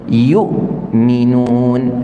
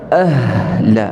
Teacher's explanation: Walaupun makhraj yang sama, tetapi sifatnya berbeza. Hamzah syiddah, yu'minun, mu'minin, mati terus. Adapun ha, ahla, jadi ketika kita sebut itu, makhraj kita tak tertutup rapat, jadi suara kita berjalan saja.